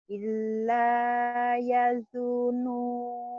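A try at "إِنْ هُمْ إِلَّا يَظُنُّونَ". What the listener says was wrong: Yazun, nyamber ya. Mohon maaf, seperti disentak-sentak, karena memang Ibu sentakannya agak kurang sedikit. Inhum illa yazunun, gitu Bu. Ya zunnun, gitu. Inhum illa ya zunnun.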